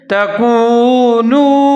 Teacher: پڑھیں گے، ولا تکونوا، نون کے اوپر پیش واو ساکن ہے، نون پیش وا نو ملا کے پڑھیں گے، ہونٹ گول کریں گے ، تکونوا۔ آگے ہے اول کافر بہ، حمزہ کے اوپر زبر